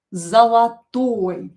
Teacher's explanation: O not stressed, we pronounce as a. Zolotoy. And don't forget about stress, stress the correct vowel, pronounce it a little bit longer.